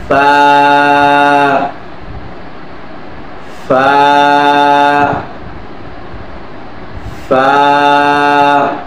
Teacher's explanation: নিচের ঠোঁটের পেট সামনের উপরে দুই দাঁতের আগার সঙ্গে লাগাইয়া উচ্চারিত হয়